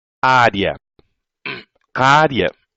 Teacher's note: você tem aqui uma semivogal e uma vogal. Então, você tem um ditongo crescente.